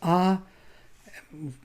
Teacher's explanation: no tongue, no lips, nothing is involved, only vocal cords are sounding the sound